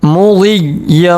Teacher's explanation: یا کے اوپر تشدید آ رہا ہے، تشدید والے یا کو ہم نے 2 مرتبہ پڑھنا ہے، 1 مرتبہ پہلے والے حرف غوض سے ملائیں گے، اور 1 مرتبہ 2 زبر کے ساتھ یا کو پڑھیں گے۔